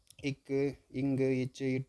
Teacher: மெய்யெழுத்துக்களை ஒழிக்க ஆகும் நேரம் அரை மாத்திரை